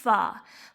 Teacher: فا کو کرنا ہے 2 الف لمبا. اور فا کا مخرج کیا ہے؟ اوپر والے 2 دانت نچلے ہونٹ کا شکم، یعنی نچلے ہونٹ کی جو تڑی والا حصہ ہے وہاں سے. فا اوپر والے 2 دانت اور نچلے ہونٹ کا تری والا حصہ.